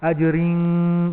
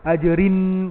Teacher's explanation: Tanwin bertemu dengan kaf. Ikhfa hakiki, ikhfa tidak jelas, dia tersembunyi. So ajaring, hujung lidah tu tak tergantung dalam tu.